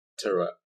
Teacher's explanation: สังเกตนะปากผมจะห่อนิดนึงเพราะว่ามันมีอิทธิพลของเสียงตัวrอยู่ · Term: เสียงควบกล้ำ